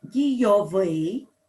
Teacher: наголос у нас падає на закінчення